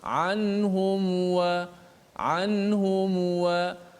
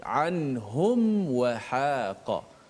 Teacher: Maka berlaku izhar syafawi, jelaskan mim mati itu dengan cara betul-betul menutup rapat suara huruf mim tu tanpa kita memanjangkan dengung pada mim itu